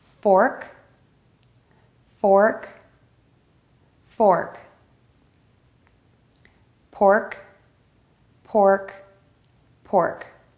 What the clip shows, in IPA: fɔrk pɔrk